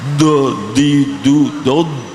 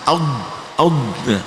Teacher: Ketika aud itu tidak ada nafas yang keluar, aud, karena ditahan yang kencang. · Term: dot